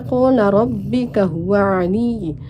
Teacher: huruf ro dibaca tafkim karena terdapat harakat fathah